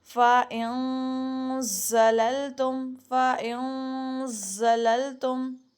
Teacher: جو زبان کی نوک ہے وہ ثنایا علیہ اور ثنایا سفلا ان دونوں کے اندرونی کناروں میں لگے گی، تو آپ کا زا ادا ہوگا. تو زبان کو بھی یہیں کہیں رکھنا ہے، ٹھیک ہے.